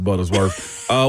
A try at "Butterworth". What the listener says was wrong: Got it wrong that time too. You said Buttersworth. There you go, throwing an S on things again.